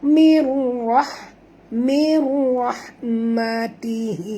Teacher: Kita kena masukkan bunyi mim ini terus ke dalam ra tanpa membunyikan nun. Jadi bunyi bacaannya mir, bukan min ra, tapi mir.